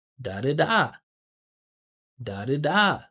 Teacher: Listen to how high that pitch goes up.